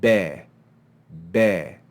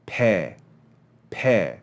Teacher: Now, what you'll notice is that when you make the be sound, you're using voice when you make that sound. Your vocal cords will be vibrating, and you can feel that in your throat. When you make the pe sound, you might feel your voice vibrating when you make the e vowel sound, but the actual consonant pe doesn't use any voice.